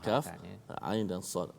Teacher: Pada huruf kaf, pada huruf ain, pada huruf sad kena baca dengan 6 harakat. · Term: Mad lazim harfi